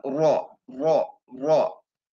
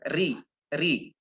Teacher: kalau kasrah RI itu tipis hanya ujung lidahnya saja